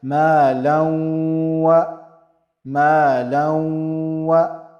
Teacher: Tanween will be getting merged into waw, and it will sound with ghunna, so it will sound like ma law, ma law. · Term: idgham with ghunna